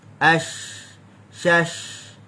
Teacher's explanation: Tafashi bukan berkait dengan bibir, tapi tafashi berkait dengan angin yang keluar daripada tengah lidah. Dia melanggar lelangit dan dia keluar mulut.